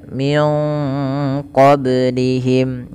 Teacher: Min qablihim. Pada lafal ba yang sukun ini ada hukum tajwid berupa namanya qalqalah, yaitu artinya memantul.